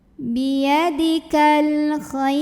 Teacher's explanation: Ada alif lam qamariyah karena ada alif lam yang bertemu huruf qamariyah yaitu kha. Maka lam sukun kita baca dengan jelas.